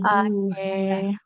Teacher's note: kafnya itu bukan bunyi kafnya yang ada e-nya, tak ke. Tapi tak, ada aliran nafas di situ.